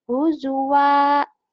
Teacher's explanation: 2 fathah dibaca 1 jika dihentikan. Itu namanya mat iwat.